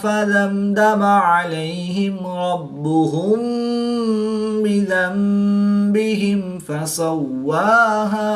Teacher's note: میم ساکن کے بعد حرف با ہے تو یہاں پر اخفاء شفوی ہوگا یعنی غنہ زمانی کر کے پڑھیں گے · میم ساکن کے بعد حرف با اور میم کے علاوہ حرف دال ہے تو یہاں پر میم ساکن میں اظہار شفوی ہوگا یعنی غنہ نہیں کریں گے بلکہ میم ساکن کو ظاہر کر کے پڑھیں گے